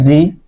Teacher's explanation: ऋ जो होता है ये जीहवा के अग्र भाग से बोला जाता है।